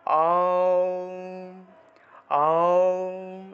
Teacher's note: ওমের উচ্চারণটা মুখটা বড় থেকে ছোট হবে, মুখটা একদম 3 আঙ্গুল, মুখে 3 আঙ্গুল পর্যন্ত বড় করবেন, অর্থাৎ আপনার মুখের মধ্যে 3টা আঙ্গুল ঢুকাবেন, ঢুকিয়ে দেখবেন মুখটা যত বড় হয় ঠিক তত বড় থেকে ছোট করবেন।